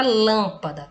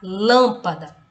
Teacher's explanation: Porque a sílaba que eu pronuncio com mais intensidade é a antepenúltima, o lã, lâmpada, tá? Eu pronuncio essa sílaba com mais força, ok? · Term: proparoxítona